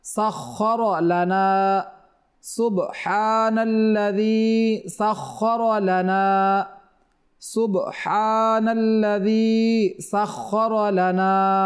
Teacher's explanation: এখানে খাটা মোটা হবে খ এবং রর উপরে জবর, এজন্য রটাও মোটা হবে